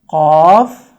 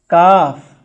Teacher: آپ نے قاف اور کاف میں بھی آواز میں فرق کرنا ہے کہ قاف یہ موٹی آواز میں اور کاف یہ باریک آواز میں پڑھا جائے گا